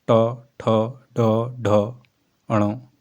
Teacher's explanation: मूर्धन्य व्यंजन ऐसे व्यंजन जिनका उच्चारण जिव्वा के अग्र भाग द्वारा मूर्धा कठोर तालु का अगला भाग को स्पर्श करता है। मूर्धन्य व्यंजन कहलाते हैं।